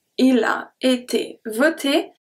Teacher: the O is a closed O. Voté, because the T comes and close the sound.